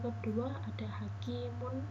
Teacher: Pada huruf kaf terdapat kasroh bertanda kasroh dan bertemu dengan huruf ya, maka kaf tersebut dibaca panjang.